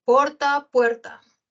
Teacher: Las vocales breves se diptongaron. Porta, puerta.